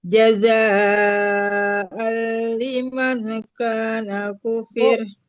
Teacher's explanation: Jaza'al masuk ke lam, ditekan ke lam ya tanwinnya.